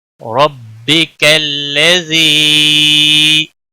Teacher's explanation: یا مدہ ہے، ایک الف کے برابر کھینچ کر پڑھیں گے۔